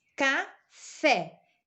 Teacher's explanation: E o fé é a sílaba tônica, é a última, então, portanto, é uma oxítona.